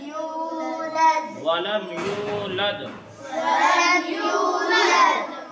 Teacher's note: ولم یولد میں یا واو پیش یو کو ایک الف کے برابر کھینچیں گے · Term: واو مدہ